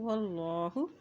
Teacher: अल्लाह के नाम से पहले ज़बर आ गया तो अल्लाह का नाम मोटा अदा किया जाएगा।